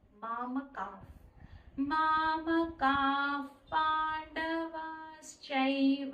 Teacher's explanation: ఎప్పుడైనా పా అక్షరం ముందు విసర్గ వస్తే ఆ విసర్గాన్ని ఎఫ్ సౌండ్తో పలకాలండి